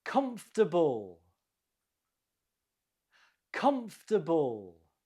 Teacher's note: The stress is on the first syllable.